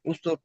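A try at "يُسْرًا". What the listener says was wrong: ইউস র, তাহলে পড়তে হবে ইউস র, এটা কিন্তু উসর হয়ে যাচ্ছে, ঠিক আছে।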